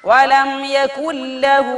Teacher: നൂനിനെ ലാമിലേക്ക് ഇദ്ഹാം ചെയ്തിട്ട് ശദ്ദുള്ള ഒരു ലാമായി ഉന്നത്തില്ലാതെ മണിക്കാതെ ഓതി